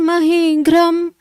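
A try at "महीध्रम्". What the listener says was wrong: ग्रह नहीं है, ध्र है, ध्र। चराचरौ को भगवन महिद्रम अहीन्द्र बंधु सलिलोपगूढ़म। ग्रह नहीं है, ध्र ध्र। मुझे मुझे मुझे ग्रह सुनाई पड़ रहा है। ध्र ध्र, महिद्र, महिद्रम, उसके बाद अ, माँ में हलंत लगा हुआ, तो महिद्रम फिर अहीन्द्र बंधु।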